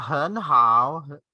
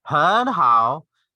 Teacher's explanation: So both are in the third tone or the falling rising tone. Like 很 好. So instead of really like executing the both in third tone, to make it lighter, make it easier for you to pronounce it.